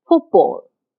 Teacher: the last sound of foot T is a voiceless sound it doesn't have any voicing and the first sound of Ball B is a voice sound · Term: coarticulation